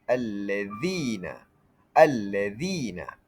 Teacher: Lam tidak dibaca, huruf selepasnya ditasydidkan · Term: idgham syamsiah